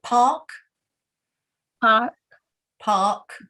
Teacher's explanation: you don't pronounce the r you just say park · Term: the long a sound